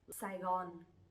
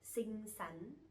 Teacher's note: we have two the same sounds, sờ nặng và sờ nhẹ, which are S and X, but we will pronounce them similarly.